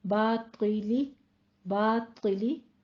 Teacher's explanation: طا کو پور پڑھنا ہے کسرہ کے ساتھ، باطلی باطلی، تیلی نہیں کہنا ہے، تیلی، ٹھیک ہے، تھوڑا سا آپ نے سائڈوں سے زبان کو اٹھانا ہے۔